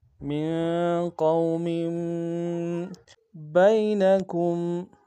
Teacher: من قوم بینکم، با کو یا کے سامنے آئیں گے، یا لین بغیر کھنچے پڑیں گے